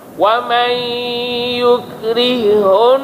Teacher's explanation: Yukrihun, masuk ha dalam ha. Bagi satu ha saja.